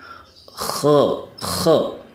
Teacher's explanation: itu ada sifat istillanya istila itu mengangkat lidah jadi KHO KHO diangkat lidahnya sehingga suaranya lebih tebal